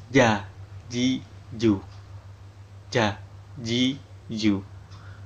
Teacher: Makhraj huruf ja tengah lidah mengenai langit-langit rongga mulut.